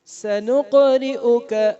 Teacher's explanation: سنقرئک میں قاف پر آواز کو ہلانا ہے, اس آواز کے ہلانے کو قلقلہ کہتے ہیں. سنقرئک, کسی حرف کو لمبا نہیں کرنا.